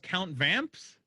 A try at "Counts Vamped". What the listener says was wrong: Counts Vamped. Counts Vamped, not Count Vamps. It's Counts Vamped.